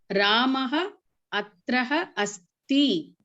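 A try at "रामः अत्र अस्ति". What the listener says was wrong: Atra. No, Visarga. Atra asti.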